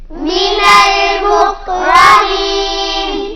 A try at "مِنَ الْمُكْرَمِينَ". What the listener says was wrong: کاف کو ہلائیں گے نہیں، را کو پر پڑھیں گے، من المکرمین۔